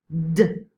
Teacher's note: If we make a t, but also add voice, we're gonna get a d, d. So these voiced consonants and vowels are produced with the vocal folds touched or nearly touched.